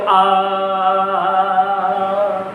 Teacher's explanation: आ कंठ की तरफ जा रही है सारी आवाज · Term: पश्च भाग